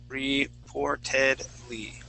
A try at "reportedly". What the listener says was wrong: So we have 2 R's in there now. Reportedly. Reportedly. Okay, you need to pronounce that P.